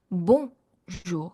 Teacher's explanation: It's a very tight O and it's a nasal sound. So it's one simple word, but there's so much to learn in even just bonjour.